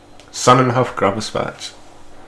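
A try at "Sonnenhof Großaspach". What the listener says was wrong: That isn't a B. It means 2 S's, so I'll let.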